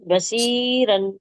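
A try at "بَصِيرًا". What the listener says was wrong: షీన్ చదువుతున్నారు మీరు షీన్ కాదు సాద్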